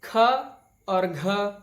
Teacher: तो जब आप बोलेंगे तो आपके मुख से वायु पर्याप्त मात्रा में बाहर निकलेगी। आप ख या घ, वैसे ही छ या झ बिना वायु के निकाले नहीं बोल सकते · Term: महाप्राण ध्वनियां